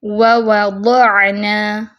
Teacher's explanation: وَوَضَعْنَا دیکھیں آئین میں صفت توسط ہے، درمیانی کیفیت میں آواز کو رکھیں گے